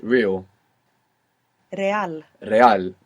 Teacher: when we have an r at the beginning you might hear it like rolling R